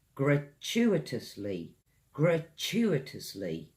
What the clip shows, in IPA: ɡrəˈtʃuːɪtəsli